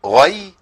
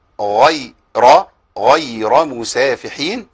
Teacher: عندنا الغين المفخمه والياء مرققه